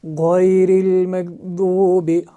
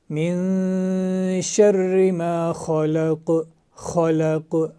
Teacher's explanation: غائن اور خا اوپر والے حصے سے ادا ہوتے ہیں، حلق کا جو اوپری والا منہ کی جانب والا حصہ ہے وہاں سے غائن اور خا ادا ہوتے ہیں